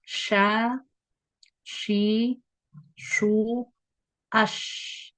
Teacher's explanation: Makhraj-nya sama dengan huruf jim, yaitu bagian tengah lidah yang bertemu dengan bagian tengah langit-langit di atasnya. Adapun sifat-sifatnya, ada hams, rakhawah, istifal, infitah, dan tafasysyi. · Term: huruf syin